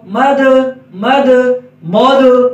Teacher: میم کے اوپر جو زبر ہے وہ کوشش کریں گے موٹی نہ ہو. ہم صاد کو موٹا پڑھ رہے ہوتے ہیں اور ساتھ ساتھ آگے میم آ رہا ہے تو میم کی حرکت بھی موٹی ہو جاتی ہے.